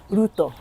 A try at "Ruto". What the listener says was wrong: You see, not Ruto. It's Ruto.